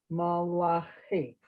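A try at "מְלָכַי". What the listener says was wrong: Okay, but it's better to say meh, not ma, but milachi.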